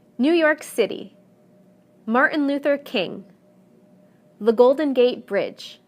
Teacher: whether the proper noun is 2 3 or even 4 words the stress will always fall in the last segment